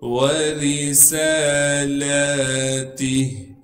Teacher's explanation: واو کو بغیر کھینچے پڑھنا ہے۔ را کو باریک کر کے پڑھیں گے کیونکہ را کے نیچے زیر ہے